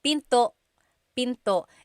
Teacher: Don't forget to stop the sound at the end. That's called a glottal stop.